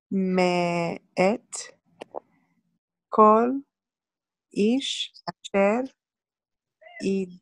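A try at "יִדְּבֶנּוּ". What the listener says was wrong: ye, say ye. Okay, we're gonna pronounce this shiva, so yid. Venu. Yid venu. And we pronounce it this time because the Dalit has a dagesh. So this is to pronounce the shiva.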